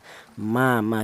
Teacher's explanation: huruf mim itu keluarnya huruf berasal dari kedua bibir yang rapat ya